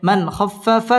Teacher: মান ইজহার গুন্না ছাড়া স্পষ্ট করে পড়তে হবে